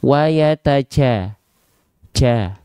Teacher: kedengeran ada percikan-percikan nafas di sana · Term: bocor, becek, nafas